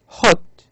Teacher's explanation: the sound in hot can be described as a low back vowel